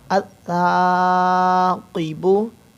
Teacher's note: ता के ऊपर सीटी की आवाज़ नहीं आएगी, क़ाफ़ हुरूफ़ मुसालिया मोटा है